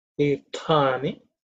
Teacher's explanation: The stha is again second letter in the third varga, so it has to be aspirated.